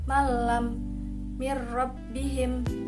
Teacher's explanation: harus ditasydidkan ke dalam salah satu huruf lam dan ro dengan suara tidak mendengung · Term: idgham bila gunnah